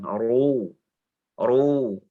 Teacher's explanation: Yang tebal, pangkal lidahnya naik.